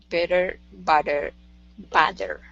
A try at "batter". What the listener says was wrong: Yeah, when you say batter, it's harder for you to keep your tongue back. With better and butter, those are pretty easy. When you're opening it up, your tongue wants to come forward.